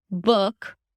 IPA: bʊk